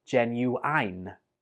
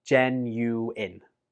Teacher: I hear some students pronounce this like genuine, but the last syllable in this word is pronounced in, not ein